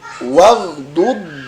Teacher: Huruf dod tidak dibaca memantul ya, tetapi memanjang. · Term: istitalah